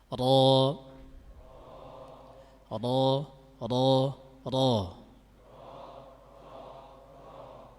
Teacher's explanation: memiliki sifat isti'la atau tafkhim, yang mana punggung lidah naik ke arah langit-langit atas